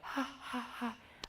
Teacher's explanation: the entire middle range of my voice sounded like a whisper